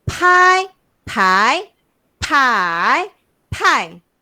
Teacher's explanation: Kita sebut P tu kena keluarkan angin.